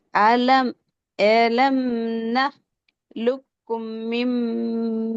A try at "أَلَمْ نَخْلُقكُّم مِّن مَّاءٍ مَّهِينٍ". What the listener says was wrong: ஒன்று ஷத்தினுடைய உச்சரிப்புக்குரிய நேரம் கொடுபடுதும் இல்ல, ம என்ற மத்தினுடைய அடையாளத்துக்குரிய நேரம் கொடுபடுறதும் போதாது.